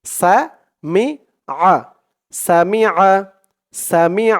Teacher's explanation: মি সামি সামি আইন জবর আইনের উপর জবর দিলে উচ্চারণ হয় আইনের উচ্চারণটা কিন্তু গলার ভিতর থেকে শক্ত করে আনতে হবে